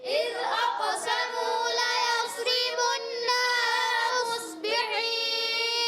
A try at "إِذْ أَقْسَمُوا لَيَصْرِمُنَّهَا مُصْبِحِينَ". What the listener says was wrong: ابھی بھی آپ نے غنہ کم کیا، جلدی میں غنہ کم ہوا، کیا آپ نے کم کیا. اذ اقسموا ليصرمنها مصبحين.